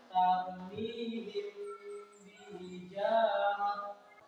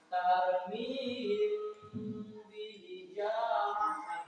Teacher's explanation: Dengung, menyamarkan bunyi mim mati dalam mendengungkan atau memanjangkan dua itu kan. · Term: ikhfa safawi